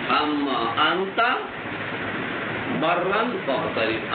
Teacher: وَأُدْغِمَتِ النُّونُ فِيهَا نون کو میم میں ادغام کیا للتقارب قریب المخرج ہونے کی وجہ سے